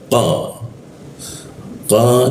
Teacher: lidahnya dinaikkan sehingga udara terkunci dan tidak ada hembusan udara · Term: huruf qo